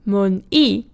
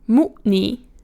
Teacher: Mun-i is stressed on the second syllable, mu-ni is stressed on the first syllable. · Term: stressed syllable